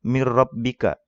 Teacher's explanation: Karena yang benar dibacanya mir rabbika. Mir rabbika tanpa didengung juga ya, tanpa digunah juga.